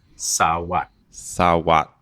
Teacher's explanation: I can hear your throat isn't closing at the end of sawat. It's just pushing through.